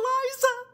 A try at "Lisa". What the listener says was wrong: Actually, it's Lisa. It has an S in it. Lisa.